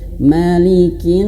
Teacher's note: Nas panjang sampai empat lima atau enam harakat. Kenapa? Karena dia ada alif ya, alif dan dia sin yang sukun karena di akhir ayat ya.